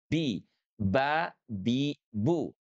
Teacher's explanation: Huruf ba itu intibaqu syafatain yang merapatkan kedua bibir kita